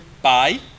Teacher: Que nós temos aí o primeiro som mais forte, por isso que é decrescente. O som de A ele é mais forte, que é o som da vogal, e o I é um som mais fraco, por isso que é uma semivogal.